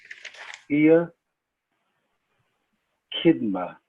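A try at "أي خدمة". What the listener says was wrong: Khidma. Not kidma. It's not ka. It's kha. Khidma.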